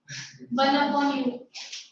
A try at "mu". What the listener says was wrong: It is pronounced as mu. U नहीं है. U is this. इसमें इधर में खींचा हुआ है ऐसा. तो U खाली without this tail. You don't have two tails, right?